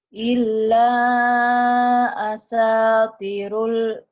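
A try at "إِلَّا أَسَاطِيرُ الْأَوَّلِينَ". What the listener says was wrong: T-nya panjang.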